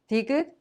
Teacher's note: has the soft T sound somewhere in the middle of T sound and the D sound.